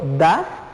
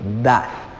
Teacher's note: puede sentir que la lengua va detrás de los dientes